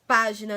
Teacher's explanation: nas palavras página, né, que a sílaba tônica é pá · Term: proparoxítonas